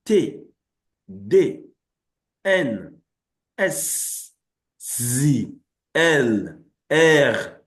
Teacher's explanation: That's where they are produced. That is, your tongue, touches the upper part of your teeth when you produce those phonemes. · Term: dental sounds